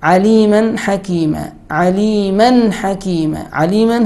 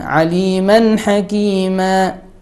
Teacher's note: has tanween fatha And it is followed by ha So we must make idhar here without ghun.